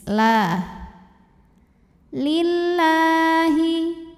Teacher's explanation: lam jalala dibunyikan secara tarqik sebab huruf sebelumnya kasrah maka dibacanya tipis